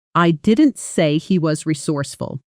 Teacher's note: With stress on didn't, it suggests someone else said it. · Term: sentence stress